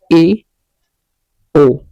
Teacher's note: जिन स्वरों के उच्चारण में मुख्य द्वार आधा बंद रहता है उन्हें अर्ध संवृत कहेंगे